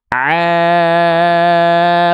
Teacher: Ain itu ketika dibuka tutup hidung enggak terpengaruh suaranya tetap sama konsisten stabil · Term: Ain fathah